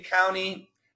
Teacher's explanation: I would say county is the most common with no T